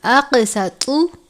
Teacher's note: طا کو بھی پر پڑھتے ہیں کیونکہ طا بھی حروف مستعلیہ میں سے ہے. تا کی طرح نہیں پڑھنا بلکہ پر کر کے پڑھنا ہے.